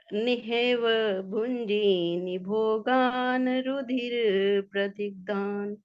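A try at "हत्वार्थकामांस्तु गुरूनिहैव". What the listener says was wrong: गुरूनिहैव, हेव नहीं है ना। भुंजीय भोगान रुधिर प्रदिग्धान।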